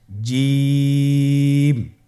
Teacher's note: এর মাখরাজ হলো জিহ্বার মধ্যখান তার বরাবর উপরের তালুর সঙ্গে লাগিয়ে উচ্চারিত হয় আপনারা পিকচারে ছবিতে দেখতে পাচ্ছেন যে জিহ্বার মধ্যখান তার বরাবর উপরে তালের সঙ্গে লাগিয়ে উচ্চারণ করতে হয়।